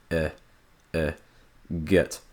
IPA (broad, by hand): ɛ